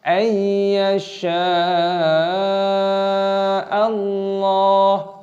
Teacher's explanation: nun sukun bertemu dengan ya idgham bi gunnah didengungkan